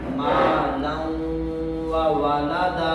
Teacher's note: تنوین کا جو نون ہے یہ واو میں داخل ہو جائے گا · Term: ادغام